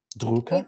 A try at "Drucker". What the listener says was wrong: Ü değil o.